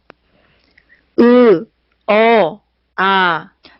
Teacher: 그래서 턱의 높이는 점점점 밑으로 내려간다라고 하는 것을 우리가 알 수가 있습니다. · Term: 혀의 높이